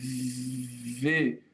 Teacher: Se eu vou fazer V, os meus dentes superiores encontram os meus lábios inferiores. Existe um movimento de fricção